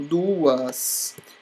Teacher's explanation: Veja que o U ficou sozinho e o A ficou sozinho, logo eu tenho hiato, tá bom? Vogal mais vogal.